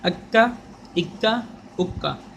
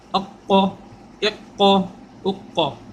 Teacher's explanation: کاف باریک قوف موٹا